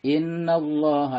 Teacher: Alif Lam Syamsiah dan Allah dibaca tebal atau tafkhim